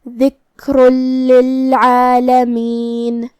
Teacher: لام حروف الادغام بغیر غنہ میں سے ہے، اور ادغام کا معنی ہے حرف کو حرف میں داخل کرنا، تو ہم یہ تنوین کو لام میں ملاتے ہوئے تشدید کے ساتھ یہ حکم کو ادا کریں گے